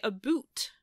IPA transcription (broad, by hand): əˈbut